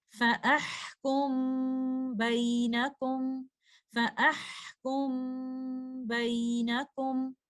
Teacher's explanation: Next example में हम देखते हैं, मीम साकिना इख्फा अशफवी की कंडीशन में है क्योंकि मीम साकिना के बाद आने वाला लेटर लेटर बा है। हम मीम साकिना का इख्फा करेंगे, गुन्ना को मुसलसल बरकरार रखते हुए